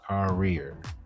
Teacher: It's basically it's the way it is that the tongue pulls back. Air is constricted but not released.